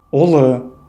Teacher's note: произносится более кратко и тверже, чем простая буква У